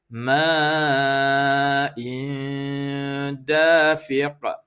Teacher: Yang in tu kita bunyikan di hidung. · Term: dengung